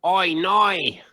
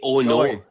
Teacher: They don't pronounce the O's as O's, it's Oys.